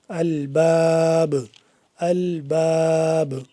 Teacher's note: وقف ہوگا تو آخر پہ پھر با ساکن ہو جائے گا۔ جب با ساکن ہو گیا تو اس کو ہم قلقلہ کریں گے، یعنی کہ آواز کو واپس کی طرف پلٹا کے پڑھیں گے